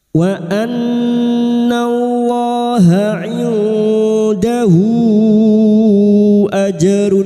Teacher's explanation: Bertemunya mad dengan huruf yang dibaca wakaf mad arid sukun empat harakat kita panjangkan.